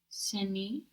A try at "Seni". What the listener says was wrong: Very good. That's the U you need, no? The U in the position of I see you rather than you see. Not sen, but seni. Perfect.